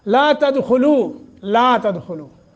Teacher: لام کے آگے الف ہے، حروف مدہ بنتا ہے، 1 الف کے برابر مد ہوگی۔